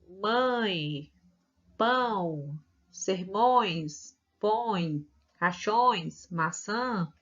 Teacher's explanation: vai sair pela boca e pelo nariz